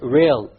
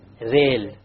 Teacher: The English R comes from the middle of the tongue. Whereas the Arabic comes from the tip of the tongue along with the incissors or the gum behind the incissors.